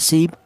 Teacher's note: qalqalah itu ada suara pantulan, cara bacanya dipantulkan ya